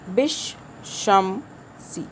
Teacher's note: شین مشدد ہے، اس میں دو شین ہے، طاقت سے پڑھنا ہے